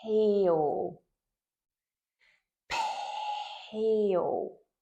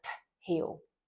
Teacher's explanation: So the correct way to teach it and to introduce it would be peel, peel. So we're turning that explosion of air at the end of P into the H word. So it might be a little bit harder to hear where that ends and where the H word starts. · you would still focus on that explosion of air joining on to the start of the H word